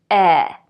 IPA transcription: ɛ